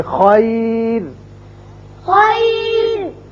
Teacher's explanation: را ساکن سے پہلے اگر یا ساکن آ جائے تو ہمیشہ را باریک ہوگا